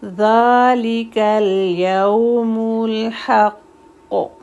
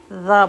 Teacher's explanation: اس ذا میں بزنگ نہیں آئے گی، زا نہیں بولیں گے، ذا بولیں گے